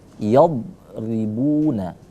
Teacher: jangan dipantulin karena huruf dha itu tidak boleh dipantulkan · Bunya dipanjangkan juga karena mad tabi'i.